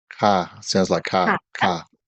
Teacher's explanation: Keep in mind that it's a rising tone for this word.